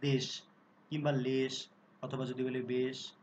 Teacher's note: একারটি যে এ ধ্বনিটি ছিল সেটা কিন্তু সংবৃত আকারে উচ্চারিত হচ্ছে।